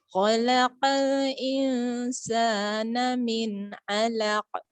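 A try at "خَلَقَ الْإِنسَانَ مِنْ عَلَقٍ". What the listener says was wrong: Huruf qafnya sempurnain dulu. Khalaqo al. Khalaqo al. Sempurnain dulu qaf ya.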